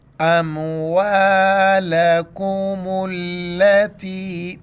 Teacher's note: چھوٹی کاف ہے باریک کر کے پڑھیں گے